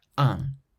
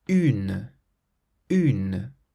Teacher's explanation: So un has an N at the end, but then une has a vowel after the N, so there's no nasal sound.